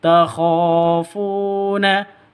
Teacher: Kha panjang 2 ketukan, ada alif diawali dengan fathah, mad asli.